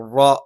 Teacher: തഫ്ഹീം വരുന്ന സമയത്ത് അല്പം കനപ്പിച്ച് റ എന്ന് പറയുകയും നാവിൻ്റെ മധ്യഭാഗം മുകളിലേക്ക് ഉയരും.